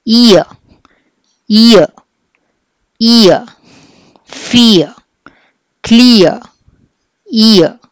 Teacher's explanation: Sixth is ఐ రాసి ఇలా ఉల్టా ఈ లాగా రాస్తే ఇది మనకి ఇయ అని చెప్పి రావాలి. లాస్ట్లో ఆరు ఉందా లేదా తెలిసి తెలియకుండా ఉండేట్టు రావాలి